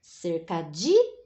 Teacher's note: o di é forte, aqui é a tônica, então é a penúltima. Então, a cercadinha é uma paroxítona, tá bom?